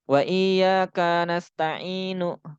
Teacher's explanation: Taknya itu pendek, itu taknya pendek, nggak boleh dibaca panjang